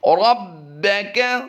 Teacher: را کو پر کرتے ہوئے ہم با سے ملائیں گے اور با کو ہم جماؤں کے ساتھ قلقلہ کر کے پڑھیں گے